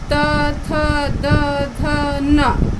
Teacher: त वर्ग दांत से होता है, उच्चारण करके देखो, त, थ, द, ध, न, ये दांत से होता है उच्चारण स्थान, दांत में जाके सटता है, जीभ स्पर्श करती है।